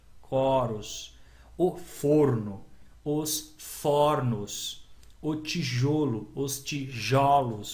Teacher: Então muda o som, muda de um som fechado para um som aberto. Então o coro, som fechado, som aberto. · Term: plurais metafônicos